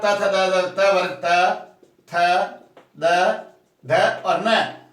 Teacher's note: अब इसके बाद में पूरा त थ द त वर्ग त थ द ध और न, ये जो आते हैं सब दंता के अंतर्गत आते हैं